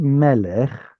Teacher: Obviously, it's got penultimate stress and it has two segels staring us in the face.